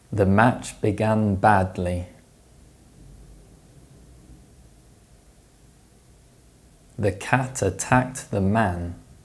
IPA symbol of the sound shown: æ